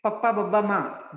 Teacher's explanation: The upper lip touches the lower lip. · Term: labials